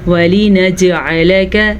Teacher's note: جیم پہ کلکلا ہو رہا ہے